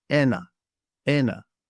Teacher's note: Take note of the stress on the e.